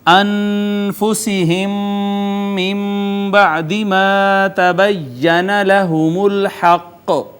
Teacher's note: میم ساکن کے بعد دوسری میم، ادغام شفوی